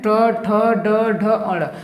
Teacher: मूर्धन्य करने का मतलब क्या होता है, जब हम इसके वर्ग को बोलते हैं ट ठ ड ढ अ, तो हमारा जो जीभ होता है ना वो मुड़ जाता है। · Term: मूर्धन्य व्यंजन